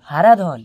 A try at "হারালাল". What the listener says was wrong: হারাধন নয় স্যার, হারালাল। হারালাল।